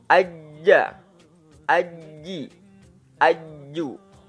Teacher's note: huruf ja tidak mengeluarkan udara coba tangannya diginiin kalau masih mengeluarkan udara berarti masih kurang pas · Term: huruf jim